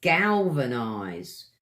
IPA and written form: ˈɡæl.və.naɪzd (galvanized)